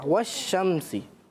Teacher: मीम साकिन पढ़ेंगे लेकिन इसमें गुन्ना नहीं करेंगे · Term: इजहार शफवी